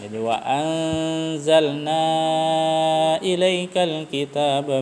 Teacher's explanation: wajib kita sambung dan panjang harakatnya itu biasa dibaca 6 harakat 6 ketukan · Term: mad wajib muttasil